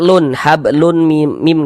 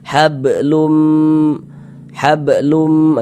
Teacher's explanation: Kemudian di bagian lum di bagian situnya tuh kita tahan sejenak suara kita kita gunahkan kira-kira sepanjang dua harakat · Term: idgham ghunah